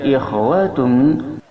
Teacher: Terkemudian ikhwatum, ada kha. Kha ini makharijul hurufnya berada di ujung tenggorokan dekat dengan lisan.